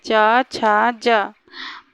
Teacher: उच्चारण के बाद वाला भाग संघर्षी हो जाता है, तो वो स्पर्श संघर्षी कहलाते हैं।